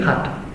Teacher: La geada es que los hablantes del occidente de Galicia, en vez de decir gato, din jato.